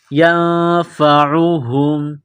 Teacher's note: مَا يَضُرُّهُمْ وَلَا يَنفَعُهُمْ، یا کو نون کے ساتھ ملانا ہے، نون ساکن کے بعد فا ہے، حروف اخفا ہے تو غنہ کریں گے، آواز ناک میں چھپائیں گے